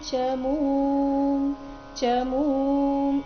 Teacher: ಇಲ್ಲಿ ಮು ದೀರ್ಘ ಬಂದು ಅದರ ನಂತರ ಅರ್ಧ ಮಕಾರ ಇದೆ